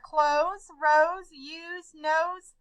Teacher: all sound like they have a Z sound instead of S